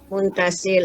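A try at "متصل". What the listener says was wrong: Puan, mutasil. Oh, diidghamkan, ada sabdu mutasil, bukan muntasil. Oh, langsung dimasukkan bunyi tak, mutasil. Oh, bukan muntasil. Nah, bila mun baru munfasil.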